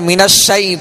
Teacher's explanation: من الشیء، یہاں یا لین ہے، یا ساکن سے پہلے زبر ہے، لہذا یا لین کو نرمی کے ساتھ ادا کریں گے